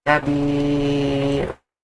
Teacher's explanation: I prolong the kasra. Habir. From the condition from 2, 4, or maybe 6.